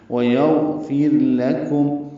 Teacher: لام باریک، کاف باریک میم ساکن پہ اظہار شفوی، ویغفر لکم، وقفاً اظہار شفوی، وصلاً بھی اظہار شفوی ہی ہے۔